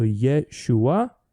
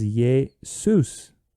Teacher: Thus, the Hebrew name for Joshua, which is Yeshua, adds an S sound at the end, and B, it swaps the sh sound for an S, and thus it becomes Jesus